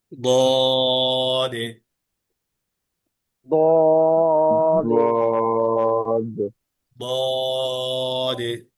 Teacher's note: বাতাসটা থাকবে বন্ধ, তবে আওয়াজটা থাকবে চালু। জিহ্বার গোড়া উপরে, জিহ্বার গোড়া থাকবে উপরে, আর মাঝখান থাকবে তালুর সাথে মিলে। · জিহ্বার গোড়া উপরে, জিহ্বার গোড়া থাকবে উপরে, আর মাঝখান থাকবে তালুর সাথে মিলে। উচ্চারণে আওয়াজটা হবে মজবুত, আর তিন আলিফ টেনে পড়তে হবে দীর্ঘ করে।